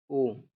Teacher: कंठ और ओष्ठ, ओ। ओ कंठ और ओष्ठ ध्वनि है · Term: कंठोष्ठ ध्वनि